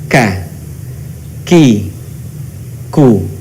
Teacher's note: Huruf K menyentuhkan pangkal lisan kita dengan langit-langit bagian belakang di depan huruf Q. Perhatikan kalau Qaf di belakang Q, maka di posisi bagian depan dari huruf Qaf keluarlah huruf K. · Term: huruf ka